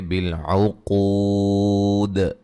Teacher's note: جب وقف کریں گے دال کے قلقلہ کو واضح کریں گے، بالعقود، پھر بڑی مد کے ساتھ بھی وقف کر سکتے ہیں۔